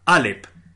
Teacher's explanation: el primer sonido de la palabra alep no es la vocal a sino justamente esta oclusión glótica de la que de la que os hablo que es lo